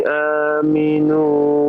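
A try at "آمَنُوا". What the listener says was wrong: Amanu, bukan aminu ya.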